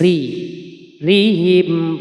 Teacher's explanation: ini adalah ro tarkik ya karena ro yang bertanda baca kasr dibaca tipis